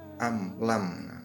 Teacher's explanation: bunyi mim disuarakan dengan terang dan jelas tanpa berdengung di bibir dengan mulut tertutup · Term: Idhar syafawi